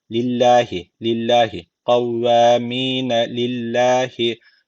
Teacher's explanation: lam harfinin harekesi altta yani Allah lafzın alttan giriş yapılıyor Dolayısıyla buradaki Allah lafzı ince okunacak